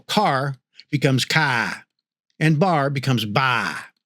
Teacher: This is called nonotic accent which drops the R and it means that the words ending in R are replaced with a vowel sound instead.